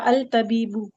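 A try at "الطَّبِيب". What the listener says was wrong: अल तबीब नहीं कहेंगे, अच्छा साउंड नहीं कर रहा, अल तबीबू क्या अत तबीब, तबीबू।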